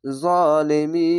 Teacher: শেষ অক্ষর সাকিন দিলে 1 2 3 তিনটি অক্ষর 3 আলিফ টেনে পড়বেন, মাদ্দা আরজি হবে এবং খাড়া যাবে এক আলিফ টেনে পড়বেন।